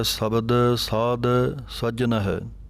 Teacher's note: ਸਾਧ ਜਿਹੜਾ ਪਾਠ ਹੈ ਭਾਰਾ ਬੋਲਣਾ ਹੈ। ਧੱਦੇ ਦੀ ਆਵਾਜ਼ ਆਉਣੀ ਚਾਹੀਦੀ ਹੈ, ਦੱਦਾ ਨਹੀਂ ਬੋਲਣਾ।